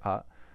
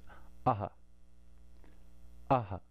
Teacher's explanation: And it literally means pushing out, So it's a little bit of force at the end of it. We don't just say ah. We put a little force behind the air and it comes aha. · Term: visarga